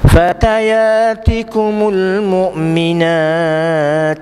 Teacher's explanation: huruf ta yang kita matikan bila kita berhenti, dia keluar angin sikit. Fatayatikumul mu'minat, ada sikit minat, sikit dia keluar angin.